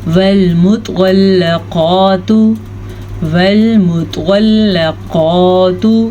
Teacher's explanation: توا کو پر پڑھیں گے، ہمیشہ ہی پر پڑھا جاتا ہے